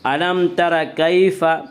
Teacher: علم تر کیف، یا لین وہ یا جو ساکن اس سے پہلے زبر ہو، یا لین کو نرم آواز کے ساتھ جلد پڑھیں گے